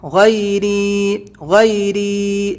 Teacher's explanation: ری کو کھینچنا ہے، یہ یا مدہ ہے کیونکہ یا پر ساکن ہے، اس سے پہلے زیر ہے، یہاں پر یا ساکن ہے، اس سے پہلے زبر ہے، یہی فرق ہے یا لین میں اور یا مدہ میں۔